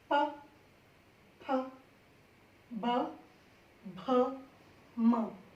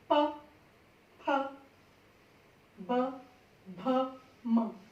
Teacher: महसूस किया आपने, दोनों होठ जुड़ रहे हैं आपके और हवा निकल रही है